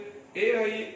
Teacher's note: ए आई दोनों वर्ण उच्चारण के लिए हमारा कंठ और तालु दोनों स्थान से हम उच्चारण करते हैं